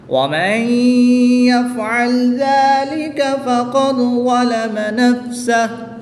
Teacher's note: دال ساکن ہے اور یہ حروف قلقلہ میں سے ہے، اور جب حروف قلقلہ ساکن ہوں تو ان میں قلقلہ خوب ظاہر ہوگا، جس میں قلقلہ خوب ظاہر کر کے پڑھیں گے۔